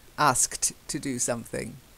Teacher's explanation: It's your tongue is going from the sk to the t very quickly.